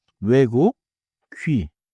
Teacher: Tongue forward, lips rounded — one target each. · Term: front rounded